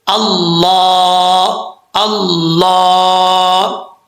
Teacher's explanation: زبان کا فرنٹ جو ہے وہ اپنے اوپر والے جو دانت ہیں ان کی جڑوں سے لگانا ہے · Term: موٹا